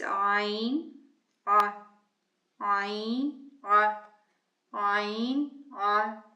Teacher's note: the sound of ayn is a guttural sound made from the back of the throat, specifically from the pharynx.